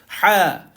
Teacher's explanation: Ha ni dia nipis dan dia pedas. Dia duduk di tengah kerongkong. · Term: ha pedas